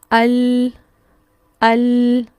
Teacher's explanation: तीनों को बोल के हमजा के साथ बोल के फील कीजिए जुबान आगे से सबसे ज्यादा फैल के लाम के मखर में लगती है